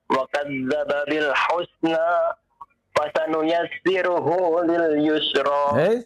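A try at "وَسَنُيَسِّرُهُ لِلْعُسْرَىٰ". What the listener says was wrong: Yang pertama yusra, yang kedua usra ya.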